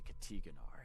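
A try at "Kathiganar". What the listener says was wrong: Katiganar. It's not Katiganar. There's an H there. We ain't French. Pronounce the H.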